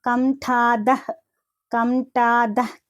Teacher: పక్కన ఇక్కడ మీరు చూస్తున్న కనుక విసర్గ ఉంది కంఠాదః అనేసని అంటే ఇది విసర్గ అనేది సగమే పలకాలన్నమాట